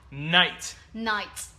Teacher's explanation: vậy cái âm cuối của thầy bật rất mạnh âm t